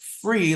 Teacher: It's what we call kinesthetic, which is movement of the teeth, tongue, and lips. If you can feel your top teeth bite your bottom lip, you know you're going to say free